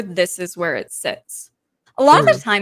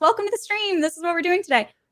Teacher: you'll notice the vocal fry has gone from my voice